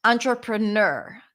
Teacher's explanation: The primary stress is at the end.